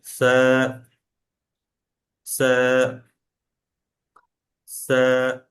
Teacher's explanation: সাটা যখন উচ্চারণ করবেন, আপনার যে জিভ, জিভের যে একদম আগা, একদম মাথাটা, এইটা আপনার দাঁতের যে আগা, এই দাঁতের আগার সাথে লেগে গিয়ে হালকা একটা নরম একটা আওয়াজ হবে, এবং টানটাও কম টান হবে। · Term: সায়ের উচ্চারণটা